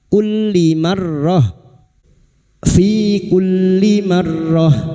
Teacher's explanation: Fi kulli masuk pada huruf lam yang bertasdid hanya masuk tanpa ditahan